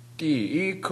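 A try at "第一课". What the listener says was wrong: 지금 디 하고 올라갔어요. 디이 이게 올라갔어요. 그냥 사성이 아닙니다. 디 완전히 끝내십시오. 디이크 디 완전히 끝내고 이크 붙여서 해보십시오.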